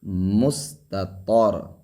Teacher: اب تا اور طا ایک باریک حرف ایک موٹا حرف، تو آواز میں فرق ہوگی